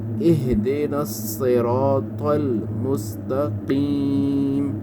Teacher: اہدنا صاد کو آپ نے موٹا کرنا ہے، اگر آپ اس کو پتلا پڑھیں گے تو یہ سین بن جائے گا